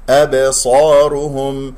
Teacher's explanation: صرفت أبصارهم، أبصارهم، الباء مقلقلة قلقلة صغرى في وسط الكلام. الصاد مفخم مرتبة أولى لأنها مفتوحة بعدها ألف. الراء والهاء مضمومة نضم الشفتين فيها، الميم مظهرة في الوقف والوصل.